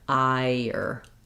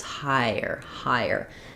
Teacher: I do need a little bit of a yuh vowel to vowel linking there, because the I ends high in front and then the is in the back. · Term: glide